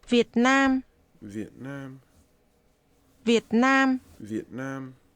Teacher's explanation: This is pronounced with low, falling, broken, and mid-level tones.